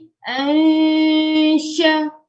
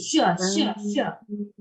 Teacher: makhraj dia lidah yang tengah-tengah ni sentuh di langit atas hak yang keras tu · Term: huruf shin